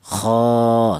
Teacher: Kemudian ada alifnya ini dibaca mad thaf alif ini didahului huruf yang berharakat fathah dibaca mad thaobi'i panjangnya yaitu satu alif atau dua harakat atau dua ketukan